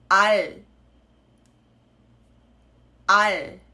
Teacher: I've stopped vocalizing pretty much as soon as my tongue comes up